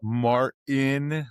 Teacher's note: because in like American English we don't say the T.